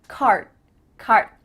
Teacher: you're not actually making a D sound but your mouth is making that shape